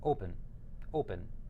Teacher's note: I'm not stressing the N part right I'm not saying a pen right